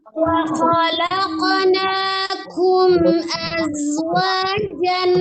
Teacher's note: Azwa ada zai, asofir di sifatnya desis, az seperti suara desisnya ular